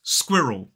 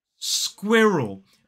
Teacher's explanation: 2 syllables, the stress falls on the first. Now this word can actually be really tough because of the combination of the S and the Q and also that R and the L towards the end.